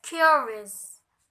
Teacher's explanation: for pattern primary unstressed unstressed